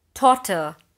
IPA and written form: ˈtɒtə (TOTTER)